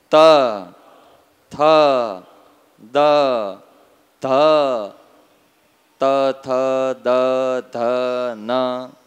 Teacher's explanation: જીભ ક્યાં અડે છે? દંતાહા, દાંતે.